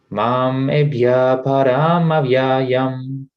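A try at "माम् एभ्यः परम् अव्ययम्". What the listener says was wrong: Mam Ebhya Param Avyayam. I think you're doing a kind of a long A here, and it's tripping up your rhythm. The last line, the param. Mam evya param avyayam.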